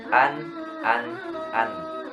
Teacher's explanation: Tidak ada qalqalah, tidak mantul, tidak ditahan juga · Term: idhar